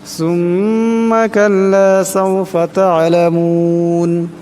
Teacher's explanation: তা'লামুন, এখানে আইন সাকিন, এই আইন সাকিনকে গলা থেকে চাপ দিয়ে বাইর করতে হবে